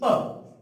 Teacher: तो प, यदि प की उत्पत्ति हमारे जो ओष्ठ है, और ओष्ठ को सरल भाषा में बोला जाता है होठ, एक ऊपर का होठ, एक नीचे का होठ। प तो उच्चारण कहां से हो रहा है? हमारे ओष्ठ से हो रहा है। तो इनका उच्चारण स्थान है, उनका नाम है ओष्ठ।